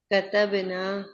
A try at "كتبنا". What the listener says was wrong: कतबना लम्बा नहीं कीजिएगा, ठीक है, वरना वो नहनु का सीगा बन जाएगा। कतबना।